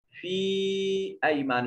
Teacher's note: فی کو تھوڑا سا لمبا کریں گے، یا ساکن ہے ما قبل مقصور، یا مدہ ہے۔